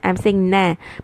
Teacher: Although I'm touching the makhraj of noon, I'm saying and I'm touching and saying na. I'm touching my tip of the tongue at the gums behind the top two front incisors teeth.